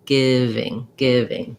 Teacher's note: You want to avoid that E sound and keep it the lax giving.